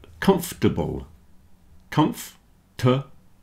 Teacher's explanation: comfortable vegetables and chocolate have lost their middle syllable at least for most people